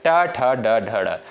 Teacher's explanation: लेकिन आपका जो ट दिया है यह दोस्तों आपका मूर्धा से उच्चारित होने वाला वर्ड है। ट, ठ, ड, ढ, ड इनका उच्चारण जो है आपका मूर्धा से होता है